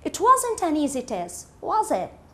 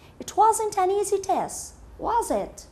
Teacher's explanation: when we comment on something and we don't need a response these questions have a falling intonation